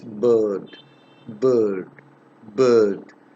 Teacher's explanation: it originates in the central part of my vocal tract